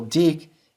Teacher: The second syllable, dik, is closed and accented, so it has the long vowel, in this case, the unchangeable long vowel.